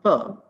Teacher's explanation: both the lips are coming together so it is bilabial sound